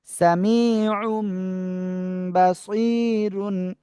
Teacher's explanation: ইকলাবের অক্ষর বা আসছে, স্পষ্ট করে পড়বো না কি করব, এই মিম দ্বারা পরিবর্তন করে পড়বো। আইন মিম দুই পেশ, এরকম হবে উচ্চারণ।